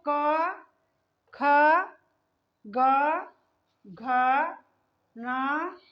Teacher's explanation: कंठ को टच करते हुए जो निकल रही है उसे कहते हैं कंठ वर्ण · ये है कंठ वर्ण क्योंकि ये हमारे कंठ से स्पर्श किया है